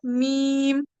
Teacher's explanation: दोनों होठों के खुश्की वाले हिस्से से ये हर्फ अदा होता है